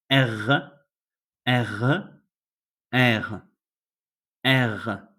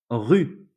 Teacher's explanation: Your tongue has to be quite up, so it makes a small vibrato when you are saying the end of the letter.